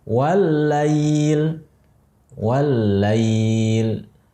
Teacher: Lam pertamanya sukun, sakinah, sukun, mati. Lam keduanya berharokat, fathah, maka diidghamkan, masukkan kepada lam kedua, dibuat jadi satu huruf, ada tasydidnya di atas.